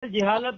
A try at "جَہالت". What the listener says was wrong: ابے جہالت ہے، جیم پر فتحہ ہے. جہالت ہے صحیح لفظ.